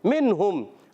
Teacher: जब कभी नून साकिन या तनवीन के बाद हुरूफ हल्की में से, हुरूफ हल्की 6 हैं, उनमें से कोई हर्फ आ जाए तो इजहार होता है. नून साकिन या तनवीन में गुन्ना नहीं करते, गुन्ना नहीं होते. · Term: इज़हार हल्की